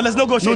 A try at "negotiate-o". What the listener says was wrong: No negotiate. No, put O behind everything.